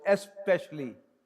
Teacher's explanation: The vowel in the beginning to ease the pronunciation of specially.